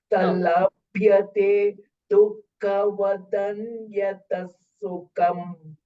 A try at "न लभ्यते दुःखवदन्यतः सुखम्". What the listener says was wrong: Dukkha, kha Mahapranas are missing.